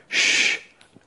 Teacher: palatal alveolar sounds have the tongue moving ever so slightly back in the vocal tract but not quite back to the soft palate